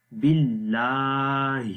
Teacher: باللہ، اور لام کو لمبا کریں گے، اس کے اوپر کھڑی زبر ہے، کھڑی زبر کو بھی ایک الف کے برابر لمبا کرتے ہیں. باللہ، آخر میں ہا کی آواز ہے جو کہ اگین گلے کے سب سے نیچے والے حصے سے پڑھی جائے گی، جہاں سے حمزہ کو ہم نے پڑھا تھا باللہ.